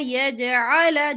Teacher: اللہ لام زبر الف لا الف مدہ ہے لمبا کریں اللہ یجعل جیم پر کلکلا ہوگا